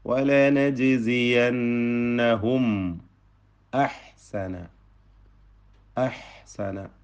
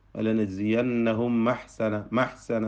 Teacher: ചുണ്ടുകൾ വിടർത്തി നമ്മൾ വായ തുറന്ന് തൊണ്ടയുടെ അങ്ങേയറ്റത്തിൽ നിന്ന് ഉച്ചരിക്കപ്പെടുന്ന ഹംസയെ ഉച്ചരിക്കുകയാണ്. വലനജ്സിയന്നഹും അ എന്ന് വ്യക്തമാക്കി ഉച്ചരിക്കണം.